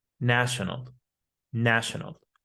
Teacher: the letter A changes to an ah sound. National, national, not national, national.